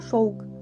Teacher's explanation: вимовляються не зовсім чітко а як проміжні звуки між звуками в та у на місці приголосної букви в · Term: нескладовий характер